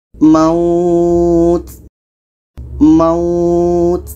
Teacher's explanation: kita panjangkan mau ini 2 harkat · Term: mad lain